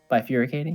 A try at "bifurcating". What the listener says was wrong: Why do you keep adding vowels that aren't there? You need to stop. It's bifurcating.